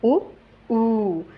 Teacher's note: यांच जिभेवरल जे स्थान आहे ते पश्च आहे